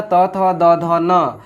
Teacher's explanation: दंत में आ जाएगा त थ द ध न,